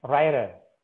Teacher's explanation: Ada ternyata T yang jadi voice flat, writer. Pergerakan lidahnya itu tidak kayak gitu, tapi writer, flat gitu, sebentar gitu.